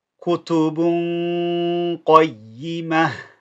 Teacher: It's a heavy ghunna here, simply because qaf is part of the heavy characters.